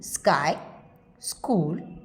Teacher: Unaspirated when preceded by s as in sky, school.